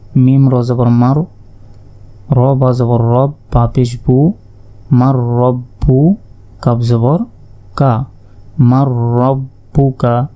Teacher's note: নুন সাকিনের পর র অক্ষরটি এসেছে ইদগামে বেগুনার অক্ষর তাই এটি গুন্না ছাড়া পড়তে হবে